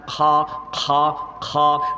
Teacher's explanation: যেখানে কাশ হয়, আলা জিবে যেখানে আছে, যেখানে মধ্যে মধ্যে চুলকায় খুশখুশ করে কাশ হয়, ওইখান থেকে উচ্চারণ হয় খা, খা, খা।